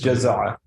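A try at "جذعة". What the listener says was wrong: Jadha with a dhal, not za. Yeah, because no, jadha'a, not jaza'a. Jazza is to chop. Jadha'a.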